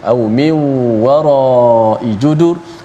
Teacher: nun bertemu dengan waw, berlaku sekali lagi idgham ma'al ghunnah. Au min wara'i judur, di hujung tu wara dipanjangkan, kemudian diwakaf, diberhenti pada kalimah judur, huruf ra yang kita matikan sebelumnya berbaris di hadapan judur.